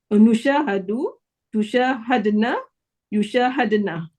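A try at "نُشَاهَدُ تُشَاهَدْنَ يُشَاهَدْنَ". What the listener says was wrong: Ya, bagus.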